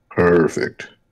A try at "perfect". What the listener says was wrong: I don't like perfect. I mean, perfect is kind of, but perfect, that's a little too much emphasis on that R.